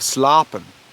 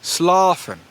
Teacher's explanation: medial p completely shifts to that f